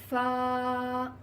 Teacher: اوپر والے دانت جب نچلے ہونٹ کے اندرونی حصے کو لگے، اندرونی حصے سے مراد ہونٹ کا تر حصہ ہے جن کے ملانے سے با ادا ہوتا ہے. جب اوپر والے جو سامنے کے دانت ہیں وہ نیچے والے ہونٹ کے تر حصے پر لگیں گے تو فا ادا ہوگا